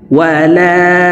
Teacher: আ বা পেশু দাল পেশু মাুদু দালকে ক্ষেত্রে সাকিন করে ফেলব দাল যেহেতু কলকলার হরফ নিচের দিকে ধাবিত করে ধাক্কা দিয়ে সাকিন করতে হবে